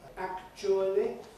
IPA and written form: ˈækʧuəli (actually)